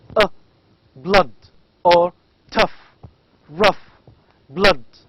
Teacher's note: these two vowels are called as central